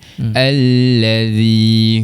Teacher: Zal huruf yang berbaris bawah bertemu dengan huruf mad. Sekarang mandangkan dia baris bawah dia bertemu dengan huruf ya. Maka dibaca dengan kadar dua harakat mad asli.